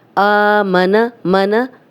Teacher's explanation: حمزہ کھڑا زبر آ، اب دیکھیں 2 حرکات لمبا ہو رہا ہے